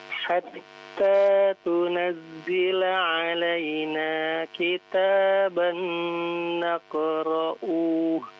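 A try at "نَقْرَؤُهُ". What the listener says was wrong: Pendek ya, naqra'uh. Berhenti ya.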